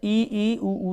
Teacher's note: और समृत में होता है जिन स्वरों के उच्चारण में मुख द्वार लगभग बंद रहता है, जैसे ई, उ।